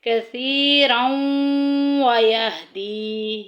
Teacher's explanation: तनवीन के बाद आ गई है वाव, वाव जो है यरमलून के हरूफ में से है, तो इसमें बागुन्ना मिलाएंगे, इदगाम करेंगे यहाँ पे।